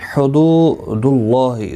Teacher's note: واو مدہ ہے، ایک الف کی مقدار کے برابر کھینچ کر پڑھیں گے۔ اللہ کا لام پر پڑھا جائے گا اس پیش کی وجہ سے، اور اس کے اوپر کھڑی زبر بھی ہے، ایک الف کی مقدار کے برابر کھینچ کر پڑھیں گے۔